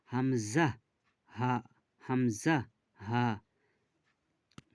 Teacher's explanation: ১ নম্বর মাখরাজ হচ্ছে হালাকের বা কণ্ঠনালীর শুরু হতে উচ্চারিত হয় হামজা হা